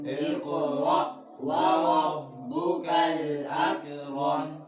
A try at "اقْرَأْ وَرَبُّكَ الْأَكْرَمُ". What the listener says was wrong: अक कलकला नहीं करना, उंगली रखो बच्चों।